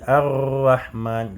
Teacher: quand tu dis ar-rahman, le bout de la langue va yani, trembler